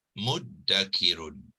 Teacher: Ta bertukar kepada dal, kemudian zal ni dimasukkan ke dalam dal dan dihilangkan, dihazafkan dalam tulisan dan sebutan.